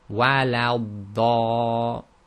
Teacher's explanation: Now in Surah Fatiha you have wala dallin, and that's when the dad carries a shadda, and you'll notice when you join to the dad, you hold it for slightly longer than you would any other letter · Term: elongated sound